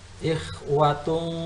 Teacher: tanwin domah bertemu dengan huruf ikhfa, maka hukum bacaannya adalah ikhfa dan didengungkan, ditahan sampai 2 harokat